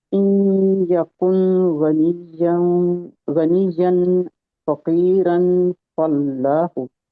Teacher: तो इन या में इदगाम गुन्ने के साथ हो रहा है